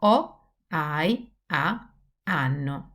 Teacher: when a word starts with H in Italian, there aren't very many, the H is always silent. We don't pronounce it. It's not like in English. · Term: the silent one